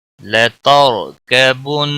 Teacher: زبر ہے اس لیے را کو پر پڑھا جائے گا کبن نون مشدد پر گنہ ہوگا